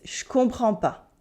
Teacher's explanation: We cut the ne in Je ne comprends pas. We cut the in je, so that makes Je comprends pas.